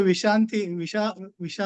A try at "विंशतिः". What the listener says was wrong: वि पे अनुस्वार है तो विंशतिः।